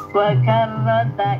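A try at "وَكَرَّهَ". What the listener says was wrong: bukan wakarrota ya, itu wakarroha.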